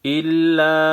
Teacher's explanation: الا چھوٹا مد ہے، 3 الف کے مقدار کھینچنا ہے